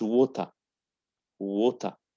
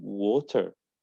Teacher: In British, don't say R in final or before consonant.